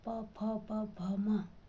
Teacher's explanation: ओष्ठ्य व्यंजनों के उच्चारण में दोनों ओष्ठ पर स्पर्श करते हैं तथा जीवा निष्क्रिय रहती है।